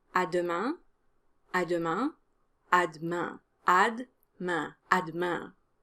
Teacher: the French de sound is different from English, and it's similar to the French te sound in that the tip of your tongue needs to touch the back of your lower teeth